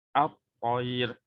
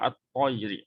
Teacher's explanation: Maksudnya bunyi lam sudah tiadalah ataupun kita panggil dia dah diidghamkan, dimasukkan ke dalam huruf selepas.